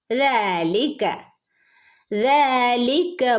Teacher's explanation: ദാലിൻ്റെ ഇവിടെ കുഞ്ഞൊരു അലിഫുണ്ട്, രണ്ടനക്ക് നീട്ടി കൊടുക്കണം കേട്ടോ